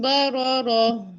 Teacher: را کو پر کرنا ہے، با کو نہیں، بو نہیں ہوتا، با باریک ہوتا ہے